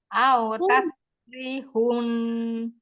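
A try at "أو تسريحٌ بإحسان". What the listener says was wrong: Ri-nya panjang. Ri-nya panjang. Ri-nya panjang.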